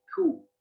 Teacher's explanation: Jadi dia nggak langsung monyong ku, tapi dia ada sedikit pergerakan dari belakang ditarik ke depan. Ku. Jadi dia u-nya nggak langsung ku, tapi ada ku. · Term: cara para Syam